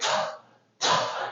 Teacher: And t is aspirated. You release a lot of air outside of your mouth.